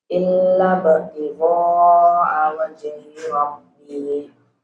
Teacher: Kalau ada ba sukun gimana? Qalqalah ya. Qalqalahnya nampakkan saja, jangan ragu-ragu.